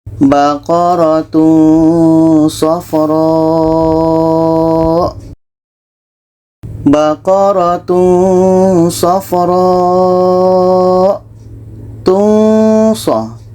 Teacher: Ketika kita sebut tanwin, kita sudah merasakan huruf sa. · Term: ikhfa hakiki